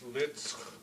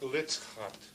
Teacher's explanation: It's a back X. You can hear it's rough, but notice I don't say litzchit, but litzchat.